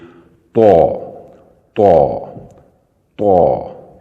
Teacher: اوپر کے 2 دانت ہیں ان کی جڑ میں لگائیں گے۔ زبان کی نوک کو سامنے والے جو اوپر کے 2 دانت ہیں ان کی جڑ میں لگا کر تھوڑا موٹا ادا کریں گے